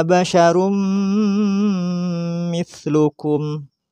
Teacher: memasukkan suara tanwin pada huruf setelahnya yaitu mim disertai gunah